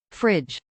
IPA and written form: ˈfɹɪdʒ (fridge)